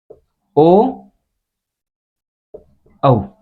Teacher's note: वे वर्ण जिनका उच्चारण कंठ एवं होट दोनों के माध्यम से किया जाता है वह वर्ण है वह कंठ होट वर्ण कहलाते हैं यानी कि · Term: कंठ ओष